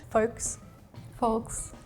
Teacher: you would say the L but over time once it moved over to like English speakers the L just kind of went away